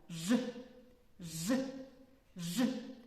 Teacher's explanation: при його вимові повітря затримується глибоко у роті біля задньої частини язика звук ж називається твердим приголосним